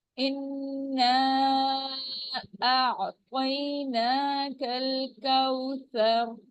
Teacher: نون کے اوپر تشدید ہے، غنہ ہوگا 2 کاؤنٹ سے